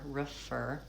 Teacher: Fur, it goes from the F directly into the vowel, and then refer, a shortened, reduced I vowel